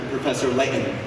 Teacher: For those of you not from Utah, there's a thing about not pronouncing your T's apparently. That's true, the glottal stop.